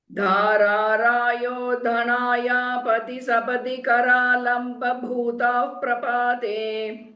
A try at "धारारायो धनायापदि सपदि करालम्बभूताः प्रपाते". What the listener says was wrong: वाव.